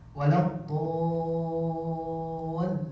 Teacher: Mad lazim mutsaqal kilmi dibaca 6 harokat.